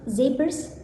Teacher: Voicing voice. Place of articulation alveolar. Manner of articulation fricative. And the last phoneme s.